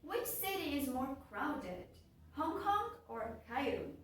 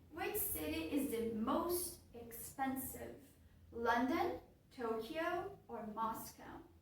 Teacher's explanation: Notice how the intonation in questions of choice drops, then rises, then drops again.